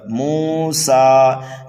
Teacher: میم کو کھینچنا ہے، سین کو بھی کھینچنا ہے ایک الف کے برابر، موسیٰ، یہاں پر ہم وقف کریں گے تو یہاں پر وقف بالسکون ہوگا، جیسا لکھا ہوا ہے ویسا ہی پڑھا جائے گا۔